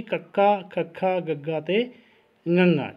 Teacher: ਜੀਭ ਕੋਮਲ ਤਾਲੂ ਨੂੰ ਛੂੰਹਦੀ ਹੈ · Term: ਕੰਠੀ ਧੁਨੀਆਂ